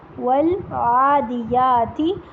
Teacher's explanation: اور واو کو ہونٹ گول کر کے ادا کرنا ہے، اردو کی طرح نہیں پڑھنا